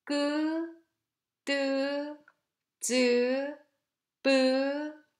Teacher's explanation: voiceless and produced with the glottis constricted and building up the air behind, and releasing the closure while pushing the air forwards without any aspiration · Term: Tense sounds